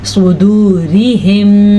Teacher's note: را کے نیچے زیر ہو تو را باریک ہوگی